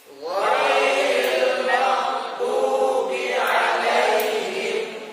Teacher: Ghairil ya-nya tipiskan, jangan ghairil gha. Tarik langsung ke ya-nya.